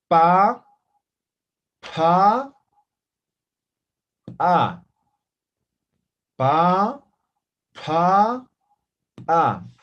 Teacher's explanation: Entonces, cuando es aspirada, es como soplando.